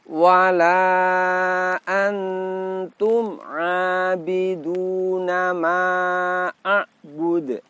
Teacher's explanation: bunyi kolkolahnya berhenti sehingga bunyi pantulannya terdengar lebih kuat daripada kolkolah sugro